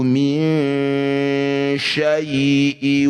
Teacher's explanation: Nun sukun bertemu huruf shin. Ya, ini disebut bacaan namanya ikhfa awsat. Bunyi nun dengungkan